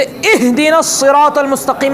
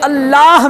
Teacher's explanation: ہاں دیکھیے پریکٹیکلی جیسے اہدنا الصراط المستقیم میں ہا ہے، اور لفظ اللہ میں آخر میں وہ بھی ہا ہے. یہ اہدنا کا اور اللہ کا جو ہا ہے وہ حلق کے پہلے حصے سے نکلنے والا، حلق کا پہلا پوائنٹ ہے